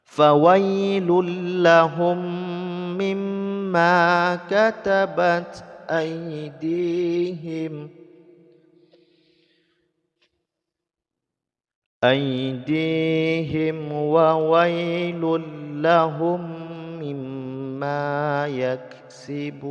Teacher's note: Nah, di akhir ayat ini tanwin bertemu dengan lam, hukumnya idgham bila gunnah, jadi diidghamkan tanpa didengungkan ya